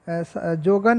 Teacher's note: तो जोगन में देखिए जोगन में अल्प प्राण यूज हुआ है, मतलब जिसमें वायु कम निकलता है, ठीक है, अंदर ही रहता है।